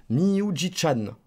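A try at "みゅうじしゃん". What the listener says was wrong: Attention, c'est chat et pas chan.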